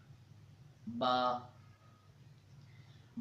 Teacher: عربی زبان کے حروف ہجا 29 ہیں، ان میں سے دوسرا حرف با ہے۔ با کو دونوں ہونٹوں کے تر یعنی گیلے حصے سے ادا کیا جاتا ہے